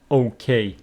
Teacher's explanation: So you know that the stress pattern for okay, it is on the second syllable, making it okay.